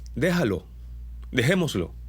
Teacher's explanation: las jotas y las g se vuelven débiles